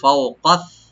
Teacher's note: ফাওকা, ফাও এখানে লিঙ্ক করে বলবো, কাফটাকে রাইট দিবেন, সাটাকে রাইট দিবেন। ফাওকাস, ফক ক yani জিব্বার গোড়া থেকে আসবে